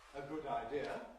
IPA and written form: ə ˈgʊd aɪˈdɪə (a good idea)